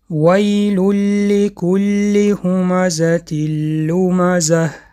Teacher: بعد از تنوین اون حرف لم اومد و اینجا ادغام شد